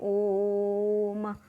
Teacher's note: जिन स्वरों का उच्चारण करने में ह्रस्व स्वरों से लगभग 3 गुना समय लगता है उन्हें प्लुत स्वर कहते हैं, जैसे ओम, इसको हम प्लुत स्वर कहेंगे।